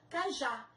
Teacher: São duas sílabas. A última sílaba mais forte, já, oxítona terminada em A.